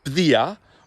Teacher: you can use that slender R sound at the beginning, which is like a voiced TH up here, bdia, or as many native speakers do, you can have a broad R as well.